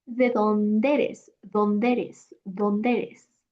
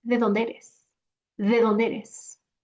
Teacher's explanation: when a word ends in a vowel and the next word starts with the same vowel, they are going to blend